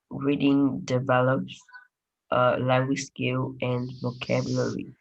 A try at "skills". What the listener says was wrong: Language skills. Letter S. Skill.